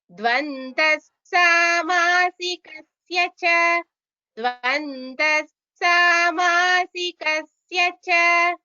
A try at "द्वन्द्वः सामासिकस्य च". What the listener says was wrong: It is dvandvaha, not dvandaha. It is dvandvaha. Dvandva is the name of a samasa.